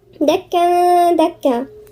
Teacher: دكا تنوين وبعدين الدال، يبقى الدال دي مش من حروف الاستثناء نغني فيها غنة إخفاء